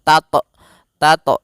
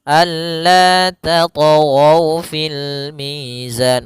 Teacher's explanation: Kemudian tat ada huruf th yang berharakat sukun maka kita namakan dengan qalqalah. Hati-hati membacanya jangan sampai membaca dengan adanya hamzah. Jangan tat tat tapi dia alla tat fil mizan mengalir saja.